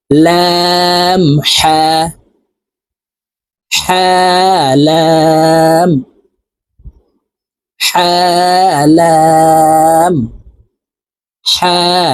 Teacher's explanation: হবে কারণ হার মাখরাজ হলকের মধ্যখান থেকে হবে